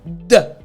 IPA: d